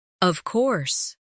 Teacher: When they are certain, their voice goes down strongly